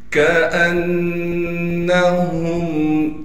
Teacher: ہا کو میم سے ملائیں گے بغیر غننے کے